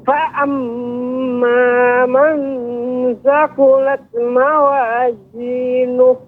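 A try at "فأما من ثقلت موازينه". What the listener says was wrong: Ya, Ibu, pengucapan harus diberikan hamasnya Ibu. Thaqulat.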